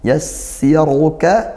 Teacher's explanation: Wa nuyassiruka, wa nuyassi, sin bertasydid didesiskan